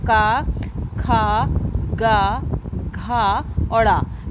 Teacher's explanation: आपका पहला अल्प प्राण, दूसरा महाप्राण, पहला फिर अल्प प्राण और फिर जो चौथा है आपका वो महाप्राण और पांचवा जो है वो अल्प प्राण। तो इस तरीके से आपका जो आपका पहला, तीसरा और पांचवा होता है वो अल्प प्राण होते हैं, और आपका जो दूसरा और चौथा होता है वो महाप्राण होते हैं।